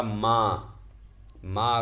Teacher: जैसे मैंने कहा मां मां अगर दूर खड़ी है तो मां को बुलाने के लिए हमने अपनी आवाज को देर तक खींचा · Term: प्लुत स्वर